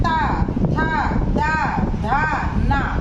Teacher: ता वर्ग है, फिर ता वर्ग में आता है ता, था, दा, धा, ना। कहाँ जीभ टच हो रही है बोलते में, हमारे दांतों से। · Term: दंत्य